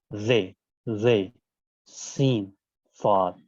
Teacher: हर्फ स्वाद को मोटा बनाया जाएगा, सीन को इस तरीके से अदा करेंगे जिस तरीके से सीटी की आवाज आए, और जे के तलफ्फुज के लिए आपको झटके से उसको तलफ्फुज करना होगा, जे, जे, सीन, स्वाद, इस तरीके से अदा किया जाएगा।